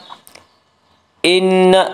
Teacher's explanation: ان نون مشدد غنہ ہوگا، غنہ کی مقدار 1 الف ہے۔